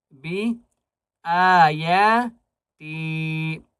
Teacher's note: حمزہ کو یا کو اور تا کو ان تینوں کو ایک ایک الف کی مقدار کھینچ کر پڑھیں گے